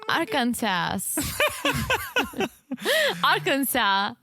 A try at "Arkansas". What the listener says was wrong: It's silent on the second S. Arkansas.